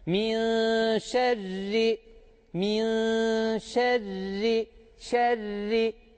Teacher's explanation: Burada eğer biz ra harfini kalın okursak yanlış okuruz buradaki ra harfini Biz ince okuyacağız